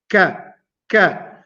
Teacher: using the back of the tongue touching the hard palate on the top